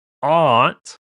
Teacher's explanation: You lose that R and it sounds like aunt.